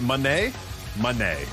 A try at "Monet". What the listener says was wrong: Not even, it's not money.